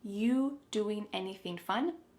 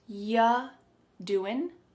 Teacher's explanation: the word you is reduced to y.